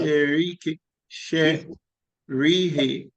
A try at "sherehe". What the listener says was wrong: There's no re. You are trying to make the A sound like E. It's sherehe, as they are, not sherihi.